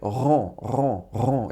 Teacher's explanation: the R in French is actually made in the back of your throat.